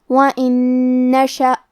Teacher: کلمت وَإِن کے آخری میں نون ساکن ہے، پھر حرف النون آتا ہے کلمت نشأ. یہاں حکم ہے ادغام بغنہ، تو ہم یہ حکم کو غنہ اور تشدید کے ساتھ ادا کریں گے